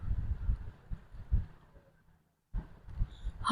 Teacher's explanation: यह सघोष के अंतर्गत आता है। महाप्राण ध्वनि है। कंठ से उच्चारण होता है। साथ ही साथ यह उष्ण व्यंजन है।